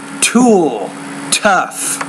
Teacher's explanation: You need to pronounce the T with more air.